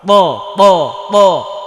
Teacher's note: তো ওপরের সামনের ওপরের ওপরের সামনের দুইটা দাঁত আছে, এই দাঁতের গোড়ায় লাগাতে হবে জিব্বার আগাটা, জোরে প্রকম্পিত করে আওয়াজ করতে হবে ত মোটা ত ত ত।